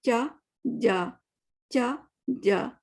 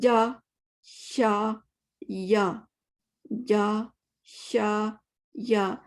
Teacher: تو جیم اور چھ ایک جیسے نہیں ہیں. جیم کے لیے ہمیں مڈل آف دا ٹنگ کو اٹھانا پڑتا ہے, جو کہ ہم اردو میں نہیں کرتے